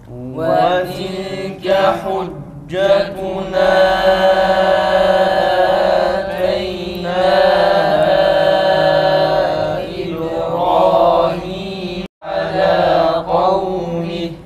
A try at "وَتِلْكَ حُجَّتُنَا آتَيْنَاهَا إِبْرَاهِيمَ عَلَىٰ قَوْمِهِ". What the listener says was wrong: Teyna'da hemze tam uzatılsın. Bir de hemze boğazdan çıksın.